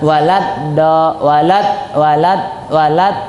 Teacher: Nah, walad walat walat keluar lidah itu sa salah. Antum lihat lidahnya itu di belakang gusi atas. Nah, ini antum harus perhatikan ujung lidah, bagian tengah, bentuk tengah lidah itu harus dihafalkan. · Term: huruf dal